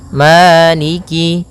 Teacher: pada bacaaniki di lafal Ma ada hukum tajwid berupa madii yaitu adanya fathah bertemu dengan alif panjangnya dua harakat Maliki kemudian Kaf di sini ada huruf kasrahnya maka sempurnakan kafnya